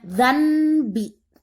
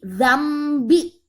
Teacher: harus hilangkan bunyi n dan rubah menjadi bunyi M. Jadi bukannya dzanbi, tapi dzambi.